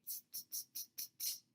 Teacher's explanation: when you say t, your airflow is completely stopped and then it is released with a puff of air